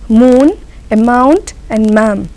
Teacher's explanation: the sound is not being produced from your mouth and you have to produce it from your nose